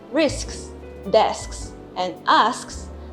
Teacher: For words ending in sks, for instance, risks, desks, and asks, the k sound comes between the 2 s sounds. After the first s sound, the back of the tongue lifts to make the k sound, cutting off the airflow before going into the second s sound.